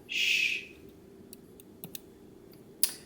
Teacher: If you just think shh for the sh sound, the voice box doesn't vibrate.